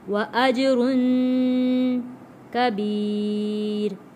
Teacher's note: جیم پہ کلکلا ادا کریں گے